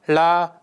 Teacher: It is produced by retroflexing the tongue tip toward the the post alveolar region while permitting lateral airflow along one or both sides of the tongue. Vocal fold vibration accompanies articulation, making it a voiced consonant. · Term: voiced retroflex lateral approximant